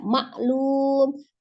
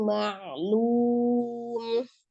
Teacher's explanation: hati-hati ain sukun sifatnya mengalir, ya, tidak maklum tapi alirkan, ma'lum.